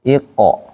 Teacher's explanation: Kalau qof sekalipun dia kasrah sebelumnya tetap pantulannya harus tebal. Iqo bukan iqe.